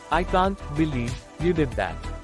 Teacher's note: notice how the pitch Rises on believe and falls on that expressing surprise or disbelief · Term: intonation